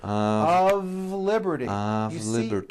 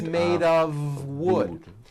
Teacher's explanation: we pronounce the word of with a voiced V